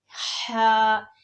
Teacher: سب سے پہلے تو لفظ ہا بولنا ہے، یہ اپنے دھیان رکھنا ہے کہ اس کو حلق کے درمیان سے نکالنا ہے